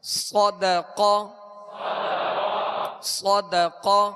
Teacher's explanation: صاد کے اندر جو سیٹی کی آواز ہے یہ اس کی خوبی ہے، اور اس کا پر پڑھنا اس کی خوبی ہے